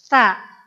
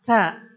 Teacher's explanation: Ada keluar nafas dikit.